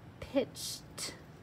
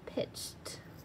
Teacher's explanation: now this base word does not end in a drt so we're not going to say ed pitched it sounds like a t